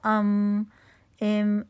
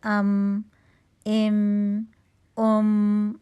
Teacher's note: میم بالکل آپ اپنے ہونٹوں کو آرام سے ملا رہے ہوں گے تو ام، اب جب با کے لیے کر رہے تھے تو ذرا زیادہ ہونٹ پہ قوت لگ رہی تھی، اب زیادہ مضبوطی سے مل رہے تھے ہونٹ، ٹھیک ہے، اس کے مقابلے میں کم قوت سے ملیں گے، ام، لیکن آپ نے پورا اپنا ہونٹوں کو بند کرنا ہے، ٹھیک ہے۔